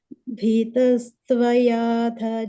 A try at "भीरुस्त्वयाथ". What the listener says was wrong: No, not Bhitas. It's Bhirus.